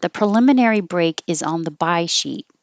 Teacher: I changed this S to a Z to remind you that the S is a Z sound and it will connect to the O